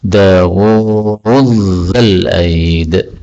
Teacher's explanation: Dzal ketemu dzal boleh idgham menjadi Dawud dzal aid.